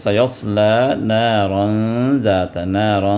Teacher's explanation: یعنی نون کے ساؤنڈ کو چھپا کر ناک سے نکالنا ہے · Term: اخفا